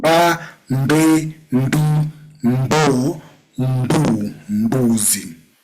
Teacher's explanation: You don't pronounce M alone. You combine M with B to produce the sound mbu.